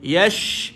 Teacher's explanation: sifat dia tafashi. Berhambur bunyi dia pada shin. Yash. Berhambur dan dia ada sifat hamas juga, angin keluar.